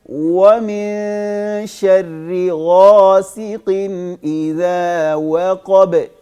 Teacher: واو چاہے زبر کے ساتھ ہو, زیر کے ساتھ ہو, پیش کے ساتھ ہو. واو کا مخرج جو ہے نا نکلنے کی جگہ وہ ہونٹوں کو گول کرنا ہی ہے